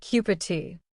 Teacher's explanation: In cup of tea, the V sound in of often disappears. It sounds like cup tea. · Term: Elision